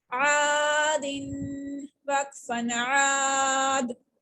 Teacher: ساکن ہونے کی صورت میں دال پھر قلقلہ لیٹرز میں چلا جاتا ہے اور اس کے اوپر قلقلہ ہوتا ہے.